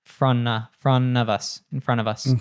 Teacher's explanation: the T in front drops so it becomes from us · of would reduce to a schwa, and sometimes it keeps the v, but we can also drop the v. He did keep it here. · And it connects to us, so it becomes of us, and then the T in the front drops, or the T in front drops, so it becomes front of us, in front of us.